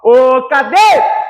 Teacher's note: O dei ali é a sílaba mais forte.